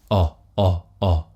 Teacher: And if it helps putting the tip of your tongue down on that bit of gum below your bottom teeth, then do it. But remember the sound is low and back. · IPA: ɒ